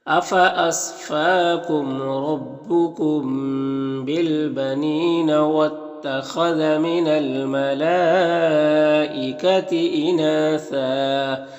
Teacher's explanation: وقف کی صورت میں ایک زبر کے ساتھ الف پڑھیں گے